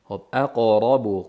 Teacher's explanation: Qofni qalqala qilamiz. Yug'on qilib zammaga moyil bo'lmasin.